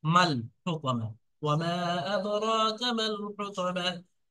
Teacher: লামের উপরে সাকিন আসার কারণে ডাইরেক্ট মিমটা গিয়ে লামের সাথে যোগ হবে, টানটা হবে না। এই আলিফটা, প্রথম আলিফটা বাদ যাবে, দ্বিতীয় আলিফটা বাদ যাবে, ডাইরেক্ট মিমটা গিয়ে লামের সাথে যাবে।